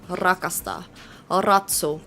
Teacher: It's not like rolled like Finnish is. In Finnish, if you're trying to say like rakasta, which means to love, you gotta like roll your R.